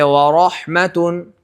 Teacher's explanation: جیسے آپ را کی ادائیگی میں دیکھ لیجئے، را میں پورے طور پر زبان، جیسے ورحمتن، زبان نہیں لگے گی تالو کی طرف، بالکل لام کی طرح نہیں لگتی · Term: تقریر